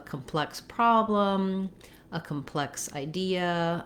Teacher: In the word complex, the adjective, we have second syllable stress, which means the plex part of the word is held longer and has a clear vowel. And then the first part of the word, the letter C-O-M, don't say a clear vowel.